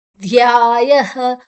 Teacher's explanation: ಇಲ್ಲ ಮಾಯೆ ಆಗಿದೆ ಧ್ಯಾಯ ಯಧ ಮತ್ತೆ ಮಹಾಪ್ರಾಣ ಧ್ ಮತ್ತೆ ಯ ದೀರ್ಘಾಕ್ಷರ ಯದ ನಂತರ ವಿಸರ್ಗದ ಉಚ್ಚಾರಣೆ ಹ